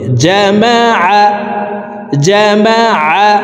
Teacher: আইন হরফকে হলকের মধ্যখান থেকে উচ্চারণ করব।